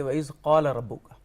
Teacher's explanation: بڑے قاف کے ساتھ جب ہم پڑھتے ہیں قال حلق سے ادا ہوتا ہے